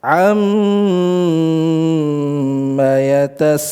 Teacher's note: membaca ghunah pada nun dan mim yang bertasydid